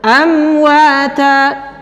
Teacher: bertemu dengan wow juga sama makhrajnya bibir atas dan bibir bawah perbedaannya huruf mim itu dirapatkan huruf wawu itu dibuka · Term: mim sukun